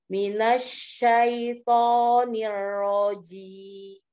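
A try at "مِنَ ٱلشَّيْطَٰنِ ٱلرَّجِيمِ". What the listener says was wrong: Ahsan, masya Allah. Ahsan. Itu kalau shinnya sudah bagus, tonnya jadi nyambung.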